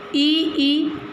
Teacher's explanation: स्वर है वह तालू स्थान में आएगा कहने का मतलब यह ई ई का अगर हम उच्चारण करेंगे तो जिस भाग पर ज्यादा जोर पड़ता है वह तालू स्थान होता है